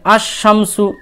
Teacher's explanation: আলিফ লাম যুক্ত হলে লাম এর উচ্চারণ হয় না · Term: হুরুফুস শামসিয়া